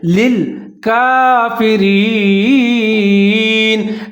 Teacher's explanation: کاف کے اوپر کھڑا زبر ہے، اس کو ایک الف کے برابر لمبا پڑھیں گے، کاف فا کے نیچے زیر ہے، را کے نیچے زیر ہے، لیکن جہاں را جو ہے اس کو موٹا نہیں پڑھیں گے، اس سے نیچے زیر ہے تو اس کو باریک پڑھیں گے، آگے جائے ساکن ہے، دونوں کو ملا کے پڑھیں گے، جیسے للکافرین۔ · دو لام اکٹھے آ رہے ہیں، ایک پہلا لام اس کے نیچے زیر ہے، اس سے آگے لام ساکن ہے، دونوں کو ملا کے پڑھیں گے